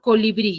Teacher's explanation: su sílaba tónica está en la bri, entonces yo la tildo simplemente porque tiene la mayor fuerza de voz ahí.